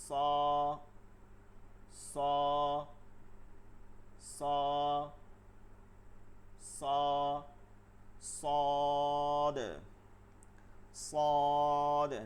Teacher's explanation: জিহ্বার আগা সামনের নিচের দুই দাঁতের আগার সঙ্গে লাগায়, সামনের নিচের দিকে যাইতে হবে